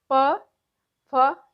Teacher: उष्ट है दोनों होठों से